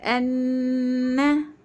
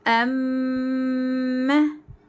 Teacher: नून और मीम यह नाक के अंदर जो बांसा जड़ होती है वहां से आती है नून और मीम में गुन्ना और खवा की आवाज ओके अब · وہ غنے کی آواز ناک کے بانسے سے یعنی ناک کی جڑ سے آتی ہے، الخیشوم سے آتی ہے.